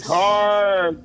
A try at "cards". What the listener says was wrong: Hey, when you said like the cards, I heard car, C-A-R, no D.